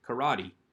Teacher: we don't put the accent on the final syllable